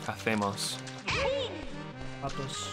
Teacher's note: They have the accent that they do, the theta, which affects just certain types of the S sound in other dialects of Spanish.